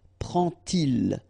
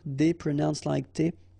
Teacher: you won't pronounce it like d to make the liaison, but you will pronounce it like t